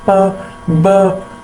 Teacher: हैं तो हवा एकदम ही बाहर निकलती है जिस तरह प जब हम ब कहते हैं तो हमारे दोनों होट आपस में मिल जाते हैं तो हवा रुक जाती है लेकिन एकदम भी वो हवा जो होती है वो एकदम रिलीज · जब एकदम हवा जो होगी वो बंद हो जाती है और जब हम उस वर्ड को उस साउंड को प्रोड्यूस करते हैं तो हवा एकदम ही बाहर निकलती है